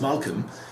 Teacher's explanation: you don't hear the L